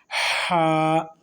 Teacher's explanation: تو بچے جب دوڑ کے آتے ہیں اس طرح سے ہا ادا ہوگا حلق سے، وسط حلق سے ہا ادا ہوتا ہے۔